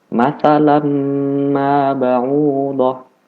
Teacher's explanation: Cara membacanya dimasukkan tanpa membaca nun.